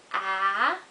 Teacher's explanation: your mouth is open and it's voiced and you can go on and on saying ah forever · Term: vowels